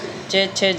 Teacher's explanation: च जो आएगा वोह स्पर्श संघर्षी है च छ ज ये चार आएंगे ये स्पर्श संघर्षी आएंगे यह